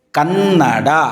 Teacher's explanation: ಕನ್ನಡ ಅಂತ ಹೇಳುವಾಗ ನಕಾರವನ್ನು ಒತ್ತು ಕೊಟ್ಟು ಉಚ್ಚಾರ ಮಾಡ್ತೀವಿ